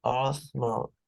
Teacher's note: the first option or the first choice is in the rising intonation, and then it's going down. The second one, the second option.